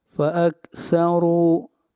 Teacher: را کو موٹا پڑھیں گے اور را کے اوپر پیش ہے